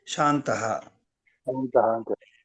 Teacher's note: తకు సవర్ణం ఏమవుతుంది నకారమే అవుతుంది కాబట్టి శాం కాస్త శాన్ అవుతుంది